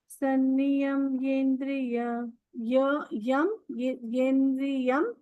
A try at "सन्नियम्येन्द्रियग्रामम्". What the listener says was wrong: No, ma'am. Yam is not. Yendriyagramam.